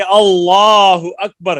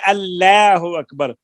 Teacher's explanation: کہ لفظ جب پر کر کے پڑھیں گے اللہ اکبر تو اس میں روب ہے, جلال ہے, اور اگر ہم اس کو باریک کریں گے اللہ اکبر تو وہ روب اور جلال نہیں ہے